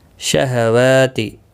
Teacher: واو کے اوپر کھڑی زبر ہے، ایک الف کی مقدار کے برابر کھینچ کر پڑھیں گے۔